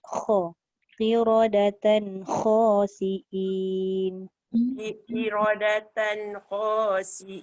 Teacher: Kha tu kena gegarkan, dia kena ada vibrate.